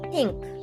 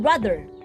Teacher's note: the dental point of articulation makes sounds of th in think and th in brother the sounds are made by blocking or constricting the airflow by